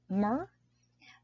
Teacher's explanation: Our onset is the phoneme M. Our nucleus is our schwa. And our coda is the R sound. This time, we have a consonant sound right after our nucleus, meaning the second syllable is an example of a closed syllable.